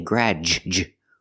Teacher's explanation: Use the a sound like black cat, gra. And the d changes to a j sound, like juice and jump.